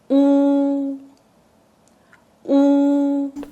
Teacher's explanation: U. Lips rounded and slightly pushed forward. Tongue pulls back with the back part rising.